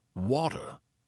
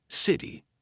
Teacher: T sounds like a D sometimes. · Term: flap T